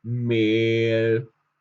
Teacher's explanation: Wenn es um EH geht, dann sprechen wir das E durch das H auch lang aus. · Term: langes E